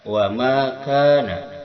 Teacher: Wama di sini ada mad tabi'i, panjangnya 2 harakat. Wama kana, wama dan ka sama, ini mad tabi'i.